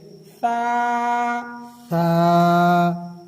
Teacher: زبان کا جو کنارہ ہے، نوک ہے، اس نوک کو دانتوں سے تھوڑا سا باہر نکالیں گے، دانتوں سے تھوڑا سا باہر نکال کے اور نرمی کے ساتھ ادا کریں گے۔